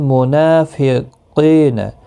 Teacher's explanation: نون کے اوپر کھڑی زبر ہے ایک الف کی مقدار کے برابر کھینچیں